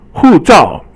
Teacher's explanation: 护 照 is both fourth tone